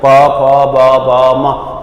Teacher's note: ઓષ્ઠ્ય, હોડ ભેગા થાય છે.